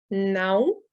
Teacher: la diphtongue à tilde O, donc nasale